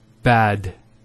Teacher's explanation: Notice the elongation of the A sound. We don't say bad, we say bad.